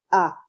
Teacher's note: मध्य स्वर में हमारा होता है आ। इसे केंद्रीय या उदासीन स्वर भी कहते हैं।